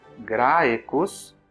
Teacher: Então, na palavra graecus, a sílaba grae é longa, por exemplo, termina em ditongo, em A e em E